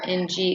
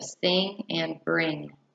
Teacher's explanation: The ng sound is produced by the back of the mouth. This is a velar sound. The sound for ng is ng, as in the end of sing and bring.